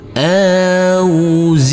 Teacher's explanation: Di sini dilembutkan huruf alif yang berfathah bertemu dengan huruf waw yang bersukun, harus kita lembutkan karena ini adalah bacaan lain. Auzi, huruf ain yang bersukun ini harus kita alirkan, harus ada aliran. Ni, huruf nun kita baca panjang dengan panjang 2 harokat.